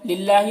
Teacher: अल्लाह के लाम को बारीक पढ़ेंगे